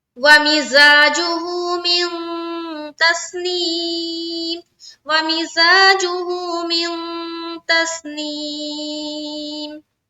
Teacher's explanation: इख्फा करना है, यानी कि नाक में आवाज को छुपानी है।